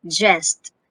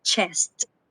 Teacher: Okay, so these are both alveopalatal affricates consonants. However, j is voiced consonant and ch is a voiceless consonant.